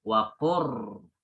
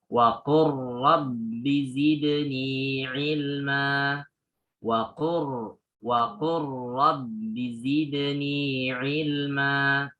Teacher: ketika lam bertemu dengan ro, contohnya waqur rabbi, maka langsung diidghamkan.